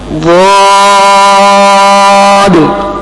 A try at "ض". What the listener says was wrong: آپ کی زبان کی نوک لگ رہی ہے، میں نے اس کو کان سے پکڑا. زبان کی کرٹ لگاؤ. ضاد. ضاد.